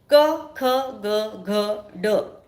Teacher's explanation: क ख ग घ ड यांना कंठव्य म्हणतात कारण यांचा उच्चार करताना ध्वनी कंठातून निघतो